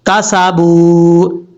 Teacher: با کے بعد واو ہے، واو مدہ ہے، ایک الف کی مقدار اس کو لمبا کر کے پڑھیں گے